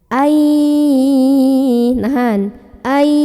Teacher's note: Di sini ada idgham bi gunnah karena ada nun sukun yang bertemu dengan huruf ya. Maka cara baca nun sukunnya adalah dileburkan atau dimasukkan ke ya sambil dengung.